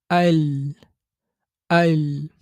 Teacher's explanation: যেহবার আগার কিনারা সামনের দাঁত উপরের দাঁতের গোড়ার সাথে লাগিয়ে লাম উচ্চারিত হয়